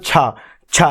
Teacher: जीभ का पहला भाग आपके किससे लगता है? तालु से। तालु के मध्य भाग से नहीं, फर्स्ट पहले भाग से लगता है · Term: तालव्य